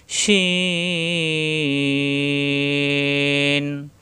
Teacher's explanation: এই সিনের উপরেই 3 নক্তা আসলে শিন হয়ে যাবে, শিন শ্বাস আওয়াজ, উপরে 3 নক্তা, জিহ্বার মাঝখানে উপরে তালুতে লাগবে,